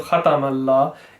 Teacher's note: Sometimes it's given a little curve. So instead of khatamallah, it says khwata.